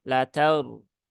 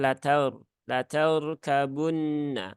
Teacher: ro ini berhubungan dengan fathah di huruf ta, ya, maka ro-nya dibaca dengan tebal ya.